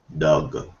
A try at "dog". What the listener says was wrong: You need to have the g at the end.